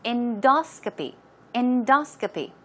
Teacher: stress goes right there on the second syllable